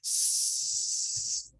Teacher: Son fricativas. Esto quiere decir que el aire sale constantemente sin que se produzca ningún cierre.